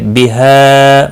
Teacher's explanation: مد منفصل ہے، تین الف کے برابر کھینچ کر پڑھیں گے